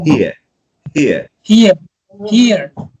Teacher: you start with let's say with an e sound and you end up with a very relaxed one